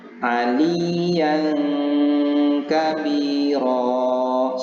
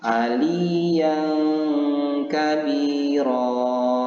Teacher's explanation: menyembunyikan bacaan tanwin ini antara idzhar dan idgham atau dibaca samar-samar hai atau seperti bunyi am kemudian disertai dengan dengung dan dibaca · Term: ikhfa